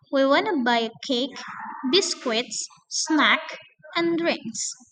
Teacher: Kalau kalian menemukan kalimat seperti ini yang terdiri dari beberapa list gitu ya, cake, biskuits, snacks, and drinks. Nah, maka pada semua listnya itu harus rising intonations kecuali at the last list. Jadi pada akhir list itu harus falling gitu ya.